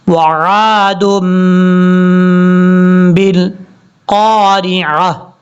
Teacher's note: یہ چھوٹا میم جہاں پر بھی آ جائے وہاں پہ جو ہے غنہ کیا جاتا ہے، آپ نے یہاں پر غنہ کرنا ہے 2 سیکنڈز کے قریب